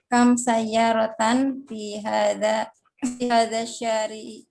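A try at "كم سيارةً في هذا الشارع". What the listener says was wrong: Ahsant, kam sayyaratan fi hadha syari'i. Sahih.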